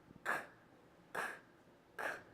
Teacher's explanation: we make that sound with our soft palate, or our velum, in the back of our tongue. So our tongue goes back and upward in our mouth. K, K, K. And our voice is not turned on. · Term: velar sound